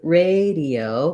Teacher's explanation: in radio we have first syllable stress letter a says the a diphthong it's going to be long